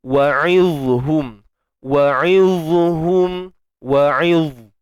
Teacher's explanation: huruf dha ni kita matikan dia dan keluarkan sikit hujung lidah. Dan yang paling penting sekali adalah kita mesti tebalkan huruf dha ini. · huruf dha ini bersifat tebal